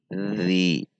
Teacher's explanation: Huruf dzal itu ujung lidah keluar sedikit dan menempel pada ujung seri gigi atas. Jadi tidak dibaca di dalam.